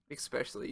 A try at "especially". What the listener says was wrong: Especially you put a C in your especially. You said especially.